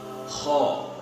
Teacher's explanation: Kho dari mana? Dari tenggorokan bagian atas ini. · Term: huruf kho